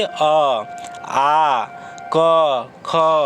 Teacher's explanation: ये सब जैसा ही बोलिएगा तो कंठ से निकलेगा आवाज़